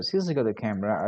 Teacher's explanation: she stressed on the word camera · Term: sentence stress